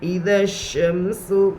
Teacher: زیر کو جلدی پڑھے، تھوڑا بھی نہ کھینچے، معروف پڑھے، مجھول آواز سے بچے